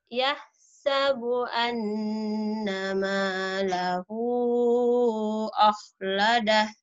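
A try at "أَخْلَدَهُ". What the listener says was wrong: Kurang khonya. Jangan akho, mulutnya dibuka akhladah. Jangan akho, mulutnya jangan diwonyongin, dibuka akhladah.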